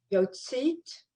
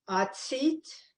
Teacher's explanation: And an ayin is silent, so you just hear the vowel.